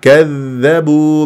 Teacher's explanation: كذبوا من غير هواء لا يجري فيها الهواء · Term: الذال